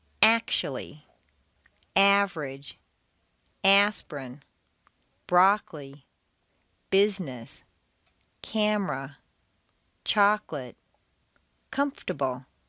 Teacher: Intonation can also completely get rid of certain entire syllables. Some longer words that are stressed on the first syllable squeeze weak syllables right out. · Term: squeezed out syllables